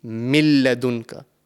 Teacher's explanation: So the correct way to pronounce this word over here will be min ladunka. We are completely joining the mim into the lam mushaddad.